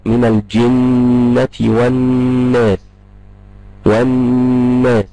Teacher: وال الناس شوف كده النون وانا بنطق النون في كلمه والناس هتلقى النون المشدده دي فيها غنه بتخرج من الخيشوم